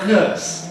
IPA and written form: nɜːs (nurse)